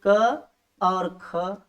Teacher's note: उन वर्गीय वर्णों में से हर वर्ग का पहला और दूसरा जो अक्षर होता है, वर्ण होता है, वह क्या होता है? अघोष होता है।